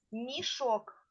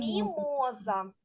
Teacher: на початку слова стоїть М'який приголосний звук